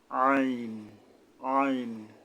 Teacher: মানে হলকের মধ্যে গলা চেপে আদায় করতে হবে আইন আইন অর্থাৎ আইন হলকের মধ্যে হতে গলা চেপে আদায় করতে হবে